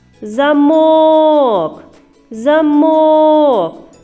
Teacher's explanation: однією рискою дітки скільки складів у слові за мок два склади на який склад падає наголос замок замок на другий склад на звук о